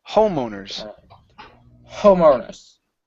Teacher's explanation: The stress is at the beginning.